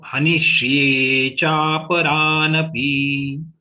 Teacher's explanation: Hanishye means 1.5 sha. So here half sha and full ya is there.